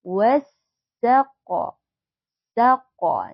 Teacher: alif lam syamsiah yang mana kita bacanya langsung ke huruf Sin ya Alif lamnya tidak terbaca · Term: alif lam syamsiyah